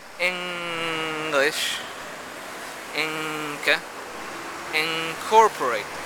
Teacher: When you say words like English, or Inca, or incorporate, the nasal is velar.